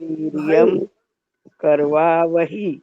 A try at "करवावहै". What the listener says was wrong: वहै, ही नहीं, ऐ की मात्रा है। करवावहै, दो ऐ की मात्रा है।